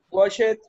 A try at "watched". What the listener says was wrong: Eso no se dice watch it. I washed con la T. Watched.